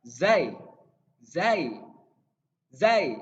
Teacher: kalau Zai gak digigit ya dia ada di belakang gigi Zai di langit lidahnya di langit-langit atas